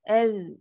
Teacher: Lembutkan sikit. Dia adalah huruf zal. Ujung lidah. Dekat gigi kapak tu kan.